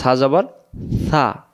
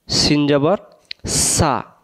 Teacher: আর আমরা যে পড়ছিলাম সা, আলিফ বা তা সা, সেটা জিহ্বার আগা থেকে সা, সিন জবর সা আর সা জবর সা। সা একটা জিহ্বার আগা থেকে নরম করে আর একটা শীষ